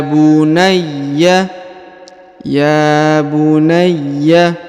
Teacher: huruf Ya ditahan dan ditekan karena terdapat tanda tasdid